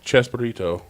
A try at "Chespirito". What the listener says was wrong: That's a P, not a B. Chespirito. Chespirito.